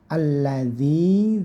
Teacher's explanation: Alladzi, lamnya ditasdid, ditekan saja. Alladzi, zinya jangan sampai tertukar dengan huruf dal, dipanjangkan satu alif karena ini matobi'i